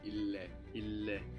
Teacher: you pronounce both L's as well